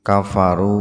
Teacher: ada waw sukun jatuh setelah doma atau doma bertemu waw sukun, sama dibaca panjang dua ketukan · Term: mad tabi'i waw